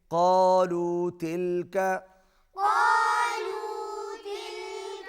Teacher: قاف کو حلق سے ادا کریں گے